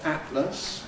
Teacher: Again, many people use a glottal stop. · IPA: ˈæʔləs, [ˈæʔləs]